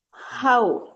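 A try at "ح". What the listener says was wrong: ஹ இல்ல, பாத்தீங்களா ரெண்டு வித்தியாசம் இருக்குது. மூணாவது தான் ஹ. நாலாவது ஹா. ஹா இல்ல. ஹா இல்ல. ஹான்னு சொன்னா அதான் மூணாவது. இது வந்து ஹா. தொண்டையால காரி வரணும். காரி காரி செல்றது ஹா. அந்த அந்த ஹா தான் சரி. தொண்டையால காரி வருது ஹா.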